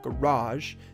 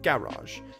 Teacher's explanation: when we would emphasize the second syllable garage they emphasized the first one